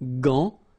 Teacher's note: you've got this A-N, so it's nasal, gant, and then final T is not pronounced here